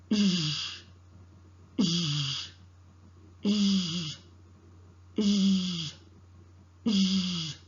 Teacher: The air escapes between the tongue and back of the teeth ridge. Keep in mind the vocal cord vibrates. · The zh sound is articulated with the tip and front of the tongue close to the back of the teeth ridge. The air escapes between the tongue and back of the teeth ridge. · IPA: /ʒ/